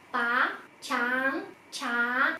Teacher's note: Âm trì khi mà mình đọc sẽ đọc cao vút lên